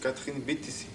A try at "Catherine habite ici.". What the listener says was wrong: Le B n'est pas encore suffisamment tendu. Alors je vais prendre le B et le tendre très légèrement vers P pratiquement. Catherine habite ici.